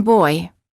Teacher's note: the lips move from a slightly rounded oval position to a relaxed slightly parted position the tongue is relaxed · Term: Oi